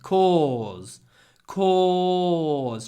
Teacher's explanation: I want to talk about cause and because. So cause has a long or sound with a z at the end.